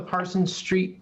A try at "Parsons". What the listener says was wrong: So I have to nitpick. It's Parsons and not Parson.